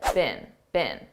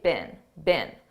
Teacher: notice I said bin bin a very unstressed bin this is how we pronounce the past participle of the verb be bin in American English I don't speak British English but I believe in British English